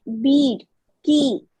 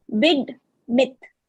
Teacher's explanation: you have in bead it is a tensed vowel you are prolonging it